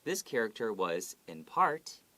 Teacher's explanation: you have to go upwards when you say part